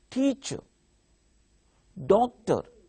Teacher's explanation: Stress is marked on first syllable.